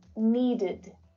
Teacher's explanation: this is an unstressed vowel sound and it creates an extra syllable which is always unstressed so the sound is short and it's low in pitch and it's pronounced like this when the regular verb in its